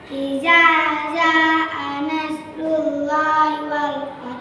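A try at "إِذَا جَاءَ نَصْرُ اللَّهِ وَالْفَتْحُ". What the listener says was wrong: Ja. Ja dengan ja ya. Yang pertama za-nya za di lidah. Ayo, za. Za. Ja. Ja-nya biasa jangan za. Idza ja. Idza ja. Idza ja.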